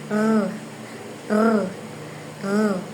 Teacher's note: pakatal na pang gilagid na may tunog